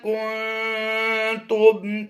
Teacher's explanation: نون ساکن میں اخفاء کا قاعدہ ہوتا ہے، کیونکہ نون ساکن کے بعد حروف اخفاء سے تا آ گیا تو اخفاء کرتے ہوئے پڑھیں گے